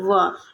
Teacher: दंतोष्ठ ध्वनि हमारी है व ये दंत और ओष्ठ दोनों से इसका उच्चारण स्थान है